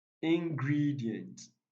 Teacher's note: answer number 42 consequent consequent it's stressed on the first syllable ingredient it is stressed on the second syllable